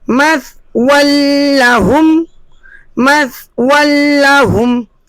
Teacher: ہم نے 2 زبر کی تنوین کو بالکل بھی غنہ نہیں کیا اور بغیر غنہ کے پڑھا۔ اب اگلے کلمے کو پڑھتے ہیں اور آپ دیکھیں کہ دونوں تنوین یعنی 2 زبر کی تنوین اور 2 پیش کی تنوین پہ ہم نے لال تیر کے نشان لگائے ہیں کہ ان میں غنہ نہیں کریں گے، غنہ کے بغیر ملا کر پڑھیں گے، اسے ادغام بلا غنہ کہتے ہیں۔